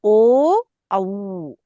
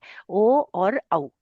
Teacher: ओ औ में हमारी जीभ कुछ भी काम नहीं कर रही कंठ से आवाज निकल रही है पर हमारे ओठ काम कर रहे ऐसे पास में आ रहे हैं ओ और औ है ना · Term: कंठोष्ठ